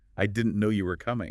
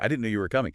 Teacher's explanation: try it with a little lift, a little emphasis on no and coming